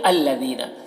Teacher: ذال کو باریک پڑھنا ہے، یا مدہ ہے، ایک الف کے برابر کھینچیں گے